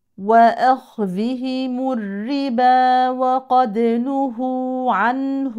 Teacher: النون ساكنه مظهره اظهار حلقي لان الحرف التالي هاء